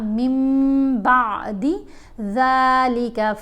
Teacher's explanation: جب نون ساکن یا نون تنوین کے بعد حرف با آ جائے تو نون کی آواز کو ہم نے میم کی آواز میں بدل کر پڑھنا ہے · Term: اقلاب